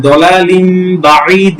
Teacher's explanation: দুই জবর দুই জের দুই পেশের পর বা আসে তাহলে সেই তানভীন এবং নুন সাকিনের স্থলে মিম দ্বারা পরিবর্তন করে পড়তে হবে